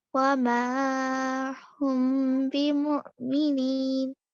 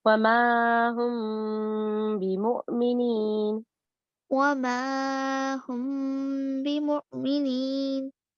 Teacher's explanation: Ikhfa Shafawi hiding occurs. This results in a light gunna, 2 counts.